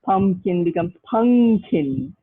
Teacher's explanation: the m sound, which is a bilabial, because of the velar sound coming after it, becomes a velar itself